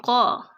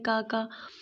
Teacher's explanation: قاف کی جو آواز ہے وہ حلق سے نکلے گی